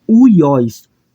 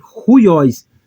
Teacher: uma aspiração Branda se lembranda nós iremos pronunciar como uiós porém como é uma aspiração áspera eu vou pronunciar como ruióis eu vou trazer um h aqui para frente